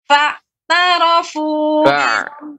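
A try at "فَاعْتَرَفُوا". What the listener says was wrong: Ainnya lebih dipanjangkan.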